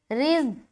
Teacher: را کے نیچے زیر ہے نا، تو را کو باریک نکالیں گے